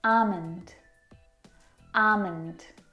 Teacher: now in this word the L is silent